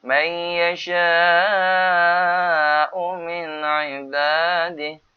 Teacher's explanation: Nun mati bertemu dengan ain kena jelas izhar. Kerana ain daripada huruf izhar khalqi.